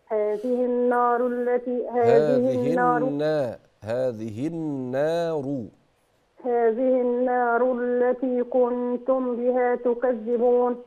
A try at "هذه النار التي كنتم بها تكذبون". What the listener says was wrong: كنتم بها، زود الغنن شوي.